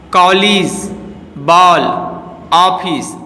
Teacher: अब एक नई मात्रा आ का प्रयोग किया जाने लगा है। इनका उच्चारण आ तथा ओ के मध्य की ध्वनि के रूप में होता है। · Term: अधर्न चंद्र